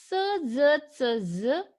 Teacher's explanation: Blade of the tongue is closer to the alveolar ridge and front of the tongue is raised towards the hard palate. And then the palato-alveolar sounds are produced.